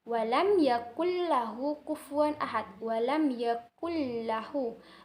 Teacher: Sedangkan yang idgham yang satunya lagi yaitu idgham bila gunah, dan cara bacanya tanpa dengung. Hal ini terjadi apabila ada nun sukun dan tanwin bertemu dengan huruf idgham bila gunah.